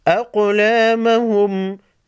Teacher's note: قاف ساکن کو ہلا کر پڑھیں گے،